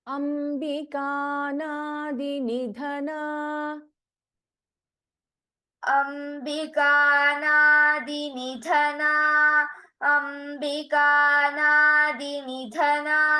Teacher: In Nidhana, Dha is a Mahaprana.